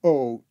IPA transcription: o: